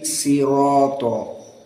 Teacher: Hanya Rawh membaca shad dengan sin.